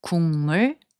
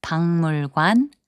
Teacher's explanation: when a final consonant 기역 is placed before 니은 or 미음, its sound changes to 이응. So 국물, which means soup broth, is pronounced as 국물.